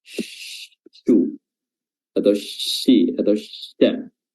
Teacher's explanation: Ya, apa itu tafasyi? Adalah menyebarnya udara atau angin di permukaan lidah